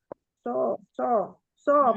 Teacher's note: jangan ada tafasi seperti huruf syin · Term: shad